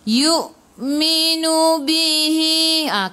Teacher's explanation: hamzah ada baris sukun kena baca dengan putus dan tahan nafas